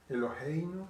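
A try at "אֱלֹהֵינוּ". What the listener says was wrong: Be careful not to say Eloheinu because you're adding Yud under the He. It has to be Elohenu, not Eloheinu. Elohenu.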